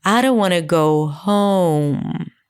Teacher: The main difference that emerges from this is that in English, home was higher in pitch.